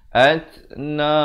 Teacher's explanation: At bunyi hamas, bunyi angin.